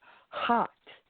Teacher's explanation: it's very vocal and breathy